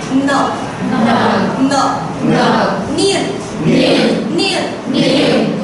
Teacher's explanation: với âm N, cái âm niên này thì nó không bật hơi, cũng không có âm cao nhá